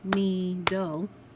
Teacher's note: When we clap, we hear our long E sound right in that first syllable.